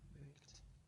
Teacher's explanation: The final sound of the verb in the infinitive form to bake is the k sound. It's unvoiced. Therefore, the ed is pronounced t, unvoiced with the t sound.